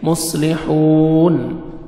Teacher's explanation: انما نحن حا کو اچھی طرح ادا کریں گے، نحن مصلح صاد کو موٹا کر کے پڑھیں گے، مصلحون حا اچھی طرح ادا کریں گے، واو مدہ آپ نے حا کو 1 سیکنڈ کھینچنا ہے، لاسٹ میں نون ساکن ہو جائے گا جب سٹاپ کریں گے، مصلحون۔ وَإِذَا قِيلَ لَهُمْ لَا تُفْسِدُوا فِي الْأَرْضِ قَالُوا إِنَّمَا نَحْنُ مُصْلِحُونَ أَلَا إِنَّهُمْ هُمُ الْمُفْسِدُونَ وَلَكِنْ لَا يَشْعُرُونَ۔